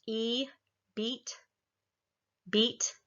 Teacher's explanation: the resonance is up towards the front of the mouth and the tongue is up high